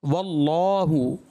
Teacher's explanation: اللہ کا لام اس میں جلالت سے پہلے اگر زبر یا پیش ہو تو پر پڑھا جائے گا